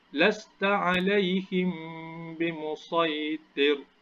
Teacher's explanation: Jadi apabila mim bertemu dengan huruf ba, dia akan dengun secara 2 harakat. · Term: ikhfa syafawi